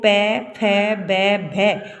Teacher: प वर्ग है उसका उच्चारण स्थान क्या होता है ओष्ठ होता है ठीक है ओठों की सहायता से बोले जाते हैं